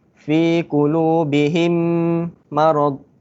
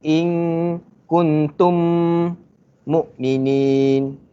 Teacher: memasukkan atau menggabungkan huruf mim pertama dalam huruf mim yang kedua, tutup mulut dengan dengung kadar 2 harakat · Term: idgham syafawi